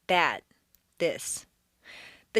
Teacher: The voiced th is like a d, but instead of being in back of the teeth, it's a quarter inch lower and forward between the teeth.